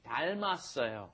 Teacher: That final M moves up in front of the next vowel, right? That 이응 has no sound because it's just holding the space in front of the vowel.